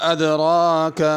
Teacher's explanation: ادراک، را کو پر پڑھنا ہے اور ذرا کھینچ کے پڑھنا ہے